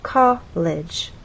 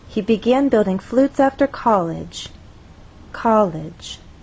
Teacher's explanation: with college two syllables our voice sort of steps down college for one level to the next from a higher level